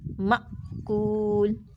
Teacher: حمزہ کے اوپر کیا ہوا کہ ہماری آواز قوت کے ساتھ ٹھہر گئی اور فوراً بند ہو گئی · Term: شدت